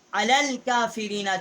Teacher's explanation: چھوٹی کاف ہے، کوے کے متصل زبان جب اوپر کے تالو کی طرف ٹکر کھاتی ہے